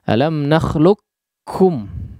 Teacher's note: dia diidghamkan langsung masuk kepada huruf kaf tanpa menyisakan sifat daripada huruf qaf sama sekali. Ya, meskipun ada periwayatan yang menyisakan sifat daripada huruf qaf, ya, itu sifat isti'alanya sedikit.